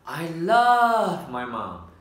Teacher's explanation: stress on love and mom. Mình sẽ đánh trọng âm vào chữ love và mom.